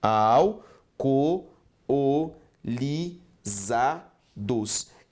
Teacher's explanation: essas duas vogais precisam ser separadas. O adequado é a formação de um hiato